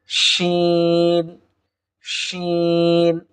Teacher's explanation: জিহুব্বার মধ্যখান তার বরাবর উপরে তালুর সঙ্গে লাগিয়ে দিলেই শিন হরফটি আমরা পেয়ে